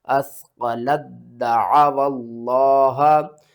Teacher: جب بھی مشدد اور ساکن آ جائے تو مشدد کی پاور زیادہ ہوتی ہے، ہم مشدد کو پڑھتے ہیں، ساکن کو چھوڑ دیتے ہیں. لام کو دال کے ساتھ ملانا، دال کو 2 بار پڑھنا ہے. لام دال زبر لد، دال زبر دا، اثقلت دا، عین زبر ع، واو لام زبر ول، لام کھڑا زبر لا، ہا زبر ہا، اثقلت دعوا اللہ، اثقلت دعوا اللہ.